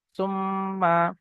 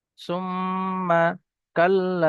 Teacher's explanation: তা মিম পেশ সুম, মিম জাবার মা, সুম্মা। মিমের উপর তাসদিদ আসছে, ওয়াজিব গুন্না এক আলিফ পরিমাণ গুন্না করে পড়তে হবে।